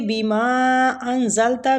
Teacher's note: بیما پہ جو مد ہو رہی ہے یہ مد جائز منفصل ہو رہی ہے، اس کی مقدار 3 الف ہے